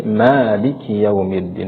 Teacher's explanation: Ma di sana adalah Mad thi'i atau mad asli yang dibaca Hanya dua harakat atau satu Alif